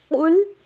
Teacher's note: قاف کو موٹا کر کے پڑھیں گے، لام کے اوپر سٹریس نہیں دینا